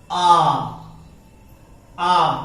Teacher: पूरा खुला हुआ, तालु और जीभ पूरी खुली हुई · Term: विवृत स्वर